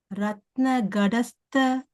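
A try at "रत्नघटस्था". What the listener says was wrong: it is not da, okay? It is the tha, the fourth one, okay? Ratna ghatasta, sorry. Ratna ghatasta Rakta charanam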